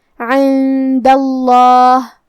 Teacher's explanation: کلمت عند کے آخری میں دال پہ زبر ہے لہذا ہم لفظ الجلالہ مطلب کلمت اللہ کے لام کو موٹی آواز میں پڑھیں گے